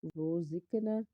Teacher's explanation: روزقنا، وا کو پر پڑھیں گے کیونکہ اس کے اوپر پیش ہے، زا جو ہے وہ حرف صفیریہ کا حرف ہے، سیٹی کی آواز آنی چاہیے۔ زا کے بعد قاف ہے، قاف حرف مستعلیہ کا حرف پر پڑھنا ہے، اور اس کے علاوہ قاف کے اوپر جزم ہونے کی وجہ سے ہم قلقلہ کریں گے کیونکہ یہ حرف قلقلہ کا حرف بھی ہے۔